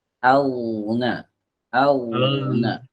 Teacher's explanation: huruf goin ini saat dia dalam keadaan sukun pertama harus ada dua ya yang harus dilakukan. Pertama dia harus dialirkan suaranya, yang kedua harus tebal, ngalir tebal.